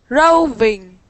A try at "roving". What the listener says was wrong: Roving. Good.